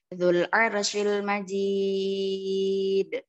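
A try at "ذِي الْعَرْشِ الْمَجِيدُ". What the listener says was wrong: العرشي نعم هذا حرف العين العرشي عين العرش نعم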